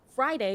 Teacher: the emphasis is on the initial fry syllable